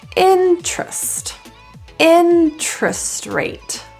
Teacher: The E in the TER is deleted altogether. So terrest or terrest becomes trust.